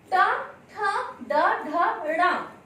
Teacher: इन वर्णों का उच्चारण स्थान है मूर्धा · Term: ट वर्ग